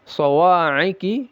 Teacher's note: shad ini ada sifat tebalnya istila'la ya dan itbaq